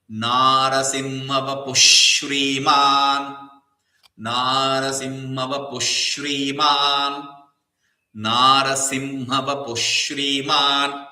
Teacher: Since there is a sha following the visarga, the two dots, you will have to chant it that H or two dots as a sh.